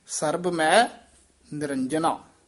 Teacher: ਮੈ ਦਾ ਉਚਾਰਨ ਨਾਸਕੀ ਨਹੀਂ ਕਰਨਾ